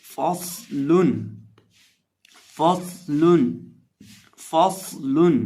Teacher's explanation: صاد کو موٹا بھی پڑھیں گے اور اس میں سٹی کی آواز بھی پیدا کریں گے.